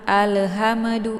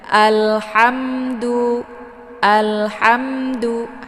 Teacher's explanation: Alhamdu, alhamdu, hamnya mim ini jangan lama ditahan sehingga membentuk suara yang agak sedikit panjang ataupun membunyikan suara yang mendengung. Karena ini ha ketemu mim itu dibaca jelas ya. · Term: idhar syafawi